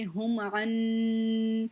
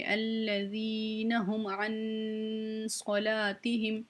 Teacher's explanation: یہاں پہ ہم اخفا کریں گے کیونکہ نون ساکن ہے، اس کے بعد صاد حروف اخفا میں سے آ رہا ہے